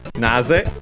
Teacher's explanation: Naze, we have seen it before, is the word accented on the first syllable. Is one of the way to say why, the interrogative why.